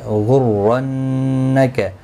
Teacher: لا یغر، لا الف مدہ ہے، ایک الف کی مقدار کے برابر کھینچ کر پڑھیں گے. غرنک، را زبر کی وجہ سے پر پڑا جائے گا، نون مشدد پر غنہ ہوگا، غائن حروف مستعلیہ ہے، یہ بھی پر پڑا جائے گا.